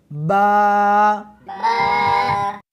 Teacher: اس حرف کو دونوں ہونٹوں کے ساتھ ملا کر پڑھیں گے۔